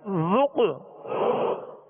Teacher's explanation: ذال کو نرمی سے پڑھنا ہے، ذال میں سیٹی اور سختی کی آواز پیدا نہ ہو